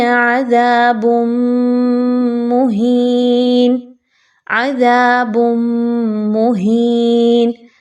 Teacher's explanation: اگلا حصہ دیکھیے تو با کے اوپر دو پیش کی تنوین کے بعد میم کا حرف آ رہا ہے اور میم حروف ادغام میں سے ہے. ایسا ادغام کریں گے کہ جس میں غنہ شامل ہوگا.